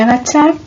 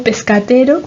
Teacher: Acachar en lugar de agachar, ¿no? Ese sonido K que sonorizó en castellano, pues aquí se mantiene como sordo, o pescatero en lugar de pescadero. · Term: conservación de las sordas intervocálicas